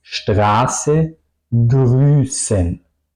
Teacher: una S picante, la vocal larga y la S larga.